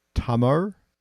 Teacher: Tamar has this very distinct sound, which the linguists call as a retroflex L at the end